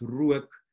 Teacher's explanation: the word for smoke doesn't have a long o, it's rook. So it has this oe diphthong.